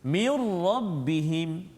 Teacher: mir rabbihim, hilang dah bunyi nun tu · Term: idgham bila gunnah